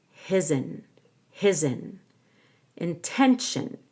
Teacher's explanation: his intention is linked together with a z his in tention you stress the t-e-n